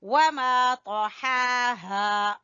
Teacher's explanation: ہا وسط حلق سے اور ہا آخر والے حلق کے آخر کے حصے سے